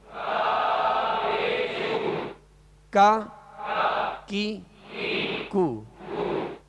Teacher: کاف کا مخرج کیا ہے؟ زبان کی جڑ، تالو کا سخت حصہ